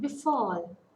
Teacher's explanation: In befall, be, be is a weak prefix, and fall is the root word. So the stress falls on the sound fall.